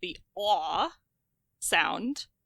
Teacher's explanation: As that sound as the lot vowel, which we can also think of as the cot as in camped vowel, moves forward, the caught vowel, the a sound, which typically is positioned or diagrammed to be in the very back bottom of the vowel chart, uh starts to move forward.